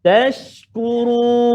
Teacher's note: tashkurun, shin tu dia ada at-tafashi kan.